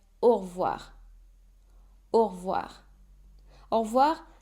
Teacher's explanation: you'll hear a lot of French natives drop the E of revoir